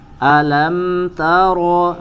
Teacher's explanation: di mim sukun tidak ada gunah di situ tidak ada ziadatul gunah · ro-nya kemudian dibaca tebal, ya, ta-nya tipis